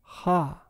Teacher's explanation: You may have already noticed that some linguists transcribe the following sound as a velar fricative, ha. However, what I pronounced was not a velar fricative, but a uvular fricative, because I constricted the airflow at the uvula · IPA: [χ]